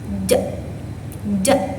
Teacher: suaranya itu ee gabungan letupan sama gesekan · huruf ja itu keluar di tengah-tengah lidah dan langit-langit yang atas. Nah, huruf ini memiliki sifat yang majhur. Nah, suaranya itu gabungan letupan sama gesekan.